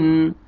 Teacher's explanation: تنوین 2 زیر کے بعد حروف حلقی میں سے حا ہے، آپ نے یہاں پہ اظہار کرنا ہے